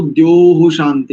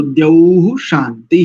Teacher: ध्यान रखिए, कई लोगों का उच्चारण और कई लोगों का उच्चारण द्योह ऐसा है। द्योह नहीं, औ है, औ।